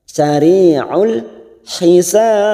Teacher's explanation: Sari'ul hisab, hisab ada mat yang bertemu dengan huruf hidup yang dibaca wakaf mat arid li sukun, ujungnya kita pantulkan karena terdapat huruf ba, qalqalah kubra